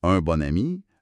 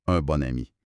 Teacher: là on entend le son N à cause de la liaison